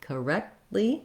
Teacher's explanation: I stop the air for the T with my tongue in the T and L position, and then I just release right into the L. So rather than correctly.